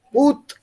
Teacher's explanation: પુત્રને બદલે હિન્દીમાં પૂત, બરાબર છે, તો ર ગળાઈ ગયો છે